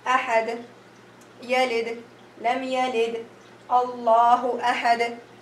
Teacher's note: And whenever I am reading and there is any of these letters at the end of the word, either it will be a sukoon, natural sukoon, or any other haraka other than the shadda or the fathat tanween, I will convert this into sukoon due to stopping, and I will do qalqalah wusta. Ahad, yalid, lam yalid, Allahu ahad, and it is medium.